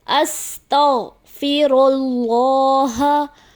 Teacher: اللہ کے لام سے پہلے پیش ہے، اللہ کے لام کو موٹا پڑھنا چاہیے